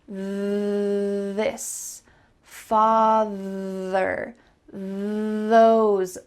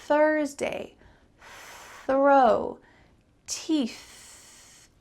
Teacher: There is a voiced way to say the TH and an unvoiced way. This father, those, is the voiced way to say TH.